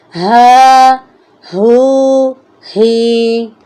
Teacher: اس کی ادائیگی جو ہے سینے کی طرف سے ہوگی، یعنی اس کو ہم بھاری آواز کے ساتھ پڑھیں گے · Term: دو چشمے والی ہا